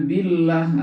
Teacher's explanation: Allah dibaca tarkik tipis Kenapa tarkik tipis karena sebelum lafaz Allah berbaris kasrah · di kata billah, billah itu Allah dibaca tarkik tipis